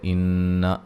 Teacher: ان نون مشدد پہ غنہ ضروری ہے